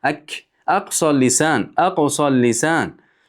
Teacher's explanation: Tilda eng oxiridan qof va undan keyin kaf chiqadi.